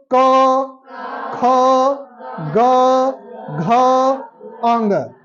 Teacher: जीभ कुछ किया नहीं जीभ शांत रहा आवाज आपके एकदम गले से आ रही है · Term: कंठ